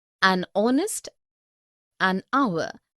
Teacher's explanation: begin with a vowel sound as the initial consonant H is not pronounced